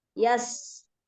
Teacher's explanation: Yas itu ada huruf sin yang bersukun, sifatnya as-sofir atau berdesis, al-hams dan rokhawah.